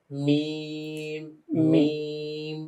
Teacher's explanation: মিম একটু ঠোঁটটা ভিতরে যাবে কারণ এটা শুষ্ক অংশে।